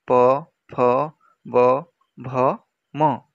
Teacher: ଯେଉଁ ଧ୍ୱନି ଉଚ୍ଚାରଣ ସମୟରେ ଦୁଇ ଓଠ ପରସ୍ପର ମିଳିତ ହୁଅନ୍ତି ତାହାକୁ ଓଷ୍ଠ୍ୟ ଧ୍ୱନି ହିଁ କହନ୍ତି।